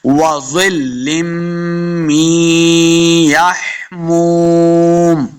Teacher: آخر پہ جب وقف کریں گے تو میم کو ساکن کرنا ہے